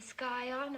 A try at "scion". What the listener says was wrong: The word is scion. The C is silent.